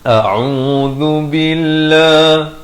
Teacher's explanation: hamzah di pangkal kerongkong ain di pertengahan kerongkong dengan baris dhammah 2 harakat, zal di hujung lidah